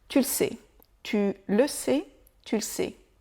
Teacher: Le E des petits mots à l'oral, il est pratiquement tout le temps oublié.